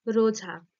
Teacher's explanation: শুরুতে স্বরধ্বনি না দিয়ে র জাতীয় ধ্বনি দিয়ে তারা শুরু করে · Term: আদি ব্যঞ্জনাগম